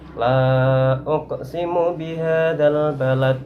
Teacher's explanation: Akan tetapi karena waqaf maka dibaca sukun, kemudian dihukumi bacaan qalqalah kubro, yaitu qalqalah yang matinya karena waqaf atau tidak asli dan bunyinya frekuensi pantulannya itu lebih besar daripada qalqalah sughra